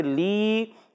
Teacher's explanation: یا مدہ ایک الف کھینچیں گے